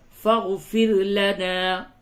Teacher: را کو باریک کریں، را سے قبل زیر ہے، را کو باریک کر کے پڑھیں گے